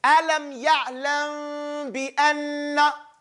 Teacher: when meme sakina comes before ba, you do not fully close your lips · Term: Ikhfa shafwiyya